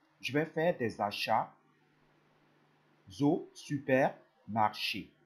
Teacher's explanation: I join the s with the first vowel of the next word.